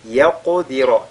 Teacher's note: la lettre qaf lue avec al-qalqala, le ra avec at-tafkhim